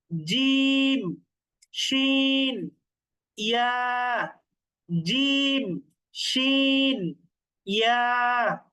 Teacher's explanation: তো এবার যদি আরেকটু সামনে বাড়াই তাহলে তো জিহ্বার মাঝখানে চলে আসি আমরা। তো এই জন্য জিহ্বার মাঝখান তার বরাবর উপরের তালুর সঙ্গে লাগিয়ে 3টা হরফ উচ্চারিত হয়